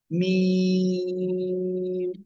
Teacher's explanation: মিম দুই ঠোঁটের শুকনো জায়গা থেকে উচ্চারণ করতে হবে